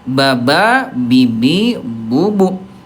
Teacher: sifat hurufnya dari segi udara dia jahar, tidak ada udara